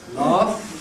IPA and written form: lɑːf (laugh)